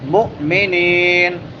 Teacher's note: نون کے بعد یا مدہ ہے، ایک الف کو برابر لمبا کریں گے